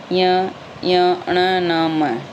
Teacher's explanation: नासिक्य है पांचों के पांचों जो पांचवा वर्ण है अपने क से लेकर म तक